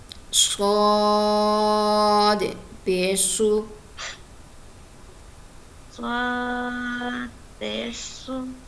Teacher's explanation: صاد کو ہم نے پر بھی پڑھنا ہے اور سیٹی والی آواز سے بھی پڑھنا ہے